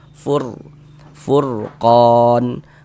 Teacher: Maka huruf ro sukunnya itu kita baca tabkhim, kita baca tebal sehingganya pangkal lisan kita naik terangkat ke atas ketika kita mengucapkannya